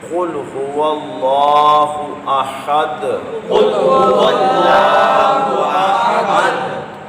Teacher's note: اور قاف پہلا حرف سورہ اخلاص کا، اس کو آپ نے پر پڑھنا ہے کیونکہ یہ مستعلیہ ہے